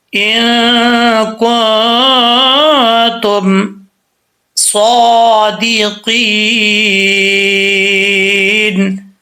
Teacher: صاد کے اوپر کھڑا زبر ہے، اس کو ایک الف کی مقدار لمبا کریں گے